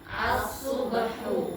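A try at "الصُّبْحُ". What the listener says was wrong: Nah, itu subhu. Jangan kepancing ke dhammanya naik jadi ini ikut naik gitu. Tapi as-subhu. Hu. Gitu ya, hu tetap dijaga. Dia itu ha ada halus gitu. Ha.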